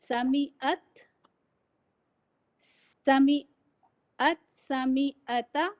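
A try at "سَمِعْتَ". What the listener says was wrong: जरा ता पे रुक जा रहे हैं। समियाता समियाता।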